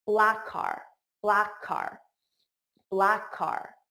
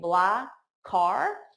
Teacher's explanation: you hear the k on car, you hear it for both